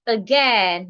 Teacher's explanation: We have the word again, not again, again. So in the word again rather, we are stressing gen. The A and I in gen sounds as in egg.